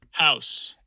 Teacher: the first part of my diphthong there is a bit lower than john's which is more like a schwa